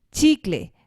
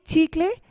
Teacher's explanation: When I am saying chicle, the stress is placed on the second to last part again.